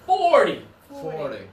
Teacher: when it's the bigger number, it's the first syllable.